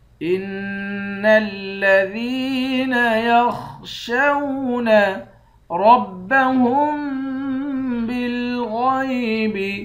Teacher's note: ان الذین یخشون ربهم بالغیب، را کو موٹا پڑیں گے، ہا کو میم کے ساتھ ملا کر میم پر غنہ کریں گے، غین کو بھی موٹا پڑیں گے۔